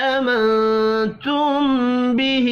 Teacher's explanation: میم ساکن کے بعد با ہے، اخفاء شفی ہوگا · نون ساکن کے بعد تا ہے، اخفاء حقیقی ہوگا